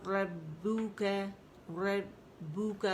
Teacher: پہلے با کا مخرج پکڑنا ہے، پھر آپ نے ہونٹوں کو گول کرنا ہے